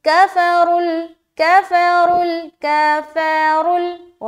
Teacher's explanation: را کو موٹا رکھتے ہوئے لام میں ملا رہے